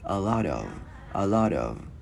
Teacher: Một hồi mình sẽ luyến cái chữ T này qua cái chữ of thành chữ D tiếng Việt nhẹ.